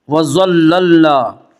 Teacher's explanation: ضا کو پر پڑھیں گے۔ ضا حروف مستعلیہ میں سے ہے